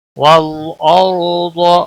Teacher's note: والارض، لام کو ہلانا نہیں، اور را ساکن سے پہلے زبر ہے، را کو پور پڑا جائے گا۔ والارض، ضاد بھی پور پڑا جائے گا، یہ حروف مستعلیہ میں سے ہے۔